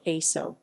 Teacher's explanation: a word that begins with a vowel letter eg tagalog aso dog is always pronounced with an unrepresented glottal stop before that vowel